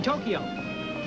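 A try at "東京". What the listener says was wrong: It is not pronounced Tokyo. It is pronounced Tokyo. Two syllables. Tokyo. Tokyo.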